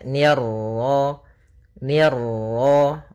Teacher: fathah bertemu Alif ni tipis ketemu ro yang ro tafkhim ro tebal